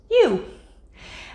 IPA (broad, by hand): ju